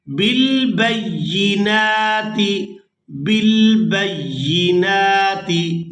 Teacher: या को सख्ती के साथ अदा करेंगे क्योंकि इसके ऊपर शद है। जो शद वाला हर्फ होता है उसको सख्ती के साथ अदा किया जाता है क्योंकि वो 2 बार अदा हो रहा होता है।